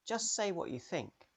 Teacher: the t in just can disappear the t in what might disappear in fast